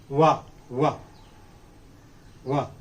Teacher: in the production of this bilabial semi-vowel, our lips get rounded.